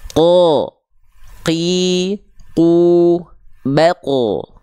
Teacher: Nempelnya ke langit-langit lunak semua, tidak keluar nafas. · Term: huruf qaf